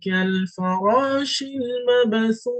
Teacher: The alif al-wasli or hamzat al-wasli is not pronounced yet, but the kaf is joined together with the lam.